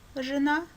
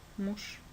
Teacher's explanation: Ж – звонкий Ж – жена или глухой Ш – муж.